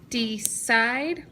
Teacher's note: we hear the long I in the second syllable